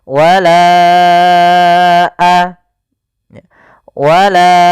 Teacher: Wala baru baca a. Panjangkan la-nya dulu 4 harokat baru lepas. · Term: mad jaiz munfasil